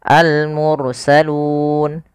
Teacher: panjangnya boleh dua harakat boleh empat harakat boleh pula En harakat contoh almursalun dua almursalun EMP almursalun enam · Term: sukun Arid